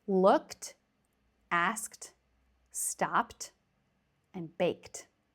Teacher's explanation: you can already hear these ed endings sound like t. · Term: t ending